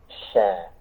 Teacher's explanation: Kemudian huruf in, huruf shin ya, ini ya, sampai menempel itu ya, sama-sama tengah lidah tapi beda caranya dengan jim, tidak sampai naik atau tidak sampai menempel ya, hanya mendekat. Dan sebarkan udaranya, sya ada udara menyebar dan mengalir ya, sya, tapi jangan sampai ya, seringkali kita baca sya tidak ya, sya tidak sya ya, sya ya.